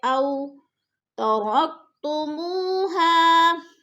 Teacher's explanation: او ترکتموها، او میں بولین ہے، وہ ساکن سے پہلے حمزہ کے اوپر زبر ہے، بولین۔ بولین کو ہم نے لمبا بھی نہیں کرنا اور جھٹکا بھی نہیں دینا